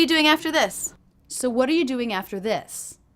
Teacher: I'm dramatically reducing the word are to the schwa